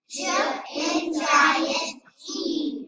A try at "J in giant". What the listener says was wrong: Okay, be careful, it's not jump, it's j. Just give me the J sound, don't put a vowel with it.